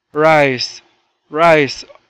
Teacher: ال i هنا مدينا فيها وقلنا rice